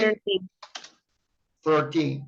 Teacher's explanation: from number 13, you are going to use the stress syllable on the word teen.